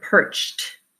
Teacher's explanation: It's an unvoiced sound. Anytime your base word ends with an unvoiced sound, ch, the ed ending is going to sound like a t.